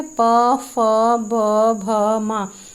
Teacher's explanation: प, फ, ब, भ, म। इसमें जो है वायु ओष्ठ का स्पर्श करके निकलती है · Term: ओष्ठ्य व्यंजन